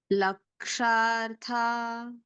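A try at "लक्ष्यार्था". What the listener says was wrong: Ksha and Ya, okay? Kshya. Kshya. Lakshyartha. Say Ksha and Ya, okay? So that's Kshya. Ksha, Ya. Join. Ksha. Lakshyartha. It's Ksha plus Ya. It should sound as not Ksha. It is Kshya. Ksha and Ya. So Kshya. Kshya.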